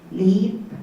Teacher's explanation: most koreans produced tense vowel e so they went leap